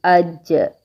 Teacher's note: زبان کا درمیان تالو کے درمیان سے لگ رہا ہے